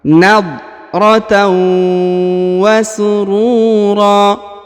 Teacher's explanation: Huruf ru dipanjangkan 2 harokat ya, karena di depannya terdapat huruf waw sukun. Bukan 2, 4 atau 6, karena di sini ada huruf alif di ujung ya.